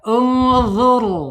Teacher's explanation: Karena e ro sukunnya sebelumnya harakat domah ya. ditebalkan, ditarik ya, ditarik lidahnya ke belakang setelah bergetar tarik ya.